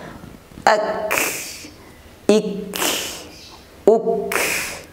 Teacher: Adapun sisa suara tadi itu sebenarnya adalah hembusan nafas karena kaf memiliki sifat hamas.